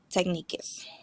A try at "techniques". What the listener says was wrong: the last word is not technicus it's just techniques